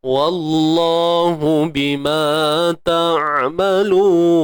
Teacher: huruf Ain sempitkan tengah kerongkong kita